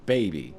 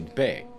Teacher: they can't even be bothered to pronounce a second syllable in baby they just say BAE